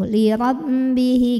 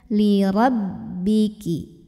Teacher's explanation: ini tekanannya di bibir jangan sampai ke hidung